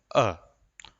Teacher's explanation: तो अ का उच्चारण कर रहे तो जीवा का मध्य वाला भाग हिल रहा है, तो ये हुआ मध्य स्वर।